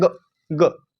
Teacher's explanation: अल्प प्राण थोड़े से प्राण निकल रहे हैं